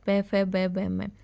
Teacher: हमारे जो होट होते हैं वो आपस में चिपक हैं टच करते हैं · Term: पवरग